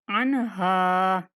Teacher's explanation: अगर वक़फ़ भी करेंगे तो हा को अलिफ के साथ पढ़ेंगे।